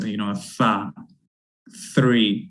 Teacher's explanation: which is that interdental fricative voiceless sound